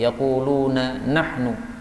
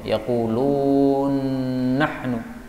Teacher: nun ketemu nun, ini bisa idgham, yaqulun nahnu.